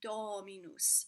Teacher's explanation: when you see the o vowel it is o it is an open o